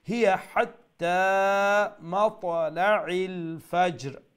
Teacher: আর হাত্তার হা middle throat থেকে আর মাতলা ইল আইন যাতে মিডল থ্রোট থেকে উচ্চারণ